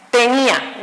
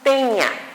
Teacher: Por ejemplo, tenía, no es teña, es tenía. Se rompe ese diptongo porque la pronunciación fuerte de la sílaba tónica recae en la vocal I